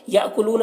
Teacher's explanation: حمزہ ساکنہ ہے، جھٹکا لگے گا